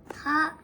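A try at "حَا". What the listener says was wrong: Panjang sikit sebab dia ada alif.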